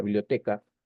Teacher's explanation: Entonces, lo correcto, lo apropiado sería decir que la mayor fuerza de voz se encuentra en la penúltima sílaba.